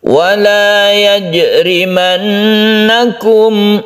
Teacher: Gunnah musyaddadah kita panjangkan, kita dengungkan.